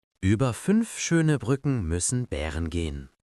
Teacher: You keep the lip shape of the original vowel, but you push the tongue forward. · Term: fronting technique